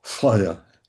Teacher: that thra in Old Persian becomes a sibilant. So you have something like the word for three, flaya, some sibilant, not exactly an S.